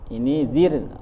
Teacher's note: Ro sukun itu tarqiq atau tipis karena sebelumnya kasrah.